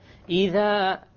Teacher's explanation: The dhal, my tongue is outside.